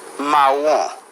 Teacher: La pronunciación es realmente similar al español, pero requiere suavizar un poco la R, ¿bien? Y la nasalización al final se reduce.